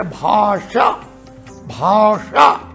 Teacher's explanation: मूर्धन्य श जो मूर्धा से बोला जाए